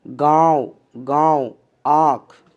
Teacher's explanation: चंद्र बिंदु का उच्चारण कंठ और नाक की सहायता से होता है